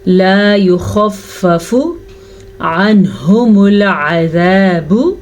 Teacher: نون ساکن کے بعد ہا حروف ہلکی میں سے ہے تو نون ساکن کو ظاہر کر کے پڑھیں گے